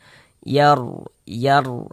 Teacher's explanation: Huruf rukun yang sebelumnya tanda baca fathah di sininya ini ada huruf r sukun tapi sebelum r su sukun itu ada tanda baca fathah atau tanda baca dhammah cuman di sini yang kita temui tanda baca fathah maka huruf ro sukunnya dibaca tebal dibaca tabkhim sehingga pangkal lisan kita naik terangkat ke atas ketika kita mengucapkannya tebalkan huruf rnya yar yar ah tebalkan seperti itu.